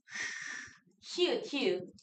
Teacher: 그래서 통로를 이만큼만 주는 거. 다시 입안이나 목청 사이의 통로를 좁히고 그 사이로 공기가 마찰되도록 나는 소리, 이런 걸 마찰음이라고 부른다.